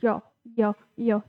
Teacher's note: जो हमारी जीभ है वो तालु को टच करती है तो य का जो उच्चारण स्थान है वो तालु है। आप गलती से हमें लग रहा है दांत या मुर्दा मत लगा दीजिएगा।